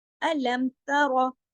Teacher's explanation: ता बारीक है, रा मोटा